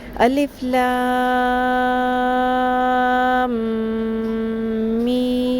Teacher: نون مشدد اور میم مشدد پہ غنہ بھی ہوتا ہے، آواز کو تھوڑی دیر کے لیے ناک میں ٹھہراتے ہیں